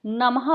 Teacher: नमः जमाते, अब यहाँ पे नम के बाद विसर्ग दिया हुआ है तो ह की साउंड देता है विसर्ग